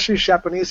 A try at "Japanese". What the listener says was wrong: Did you just say she's Japanese? Japanese. It sounds like you put an S in front of it.